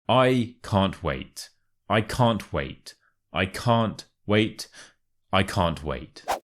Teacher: tips firstly make sure to stress the word wait and secondly the can't and the wait kind of merge together